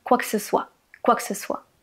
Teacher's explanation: Quoi que ce soit qui prononcé rapidement donne quoi que c' soit.